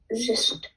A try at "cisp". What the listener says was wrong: It's not a z, it's a s, cisp. With a P on the end. Cisp. I keep hearing a t sound instead of a p sound.